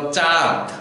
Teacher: যেই বর্ণটির উপরে চন্দ্রবিন্দু আছে শুধু সেইটুকুই নাসিক্য করতে হবে, অর্থাৎ নাকের সাহায্যে আমাদের শ্বাস কিছুটা বের হবে। যেই বর্ণের উপরে চন্দ্রবিন্দু থাকবে ততটুকুই শুধু আমরা নাসিক্য করে উচ্চারণ করব, কিন্তু যে বর্ণের উপরে চন্দ্রবিন্দু নেই সেটিকে কিন্তু নাসিক্য করা যাবে না, অর্থাৎ সম্পূর্ণ শব্দটিকে নাসিক্য করা যাবে না।